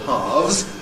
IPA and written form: hɑːvz (halves)